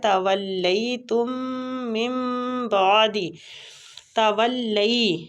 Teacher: لئی یا لین ہو رہا ہے، وہ کو لام کے ساتھ شدت سے ملاتے ہوئے یا لین پہ تھوڑا سا کھینچیں گے